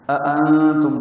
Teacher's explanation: اَأَنتُمْ دو حمزے اکٹھے ہیں، نون ساکن پہ اخفا ہے، میم ساکن پہ اظہار شفوی ہے۔